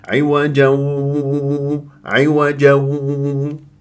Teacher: لازم انت تجيب غنه من الخيشوم